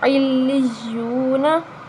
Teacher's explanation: یہاں واو مدہ ہے، کیونکہ واو ساکن سے پہلے حرف پر پیش آ رہی ہے تو ہم اس پر، یہ واو مدہ ہے تو ہم اس کو ایک الف کے برابر لمبا کریں گے